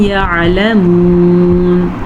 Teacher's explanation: عین کے مخرج کو واضح کریں اور حلق کے درمیان والے حصے سے یہ نکلتا ہے اسی لیے اس کے مخرج کا خاص خیال رکھنا پڑتا ہے ورنہ یہ حمزہ بن جاتا ہے جو کہ منہ کے درمیان سے نکلتا ہے.